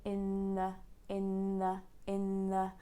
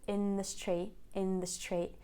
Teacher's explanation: you simply hold this n on the teeth for a little bit longer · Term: assimilation